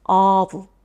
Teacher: 오보다 우보다 훨씬 더 입을 크게 벌려주는 모음이 바로 어입니다.